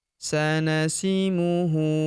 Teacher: Huruf hu kita panjangkan dua harakat karena berharakat u terbalik seperti ini.